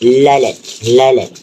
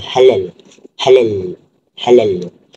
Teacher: kita boleh rasa angin udara akan keluar daripada sisi lidah bukan yang daripada tengah ataupun rongga hidung. Dia akan keluar daripada sisi lidah. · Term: sisian